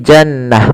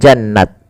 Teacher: dia rubah atau dirubah menjadi huruf ha sukun, maka menjadi jannah, bukan jannat, tapi jannah.